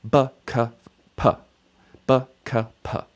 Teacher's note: And so P is the lips closing with no vocal cord vibration. So these 3 letters are stops, and so the dagesh is like a stop sign for these 3 letters. You just get the one quick sound